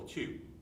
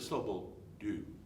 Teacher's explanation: whisper the syllable too you'll feel a puff of air now whisper the slope will do you'll hardly feel any air at all